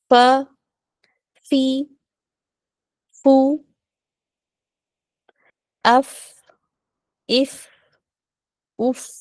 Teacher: फ का मखरज है कि जब ऊपर के दोनों दांत का सिरा जो हमारे फ्रंट टू टूथ है ना उसका वो हमारा नीचे के होठों के अंदर गीले हिस्से पर लगता है तो हर्फ फ अदा होता है